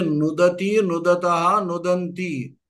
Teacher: ప్రయోగంలో అణ ఉండదు, నకారం, మామూలు నకారమే, అంటే దంత్యం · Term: దంత్యనకారమే